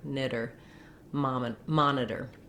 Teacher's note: The flap is a voiced sound, tongue lifts up to the T and D position, just taps up there once and drops.